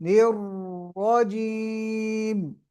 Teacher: را مشدد ہے، اس میں تکرار اور زیادہ کرے